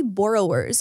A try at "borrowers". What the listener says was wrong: it's gonna be borrow in America. Yeah, it's not borrowers. You're not burrowing into the ground.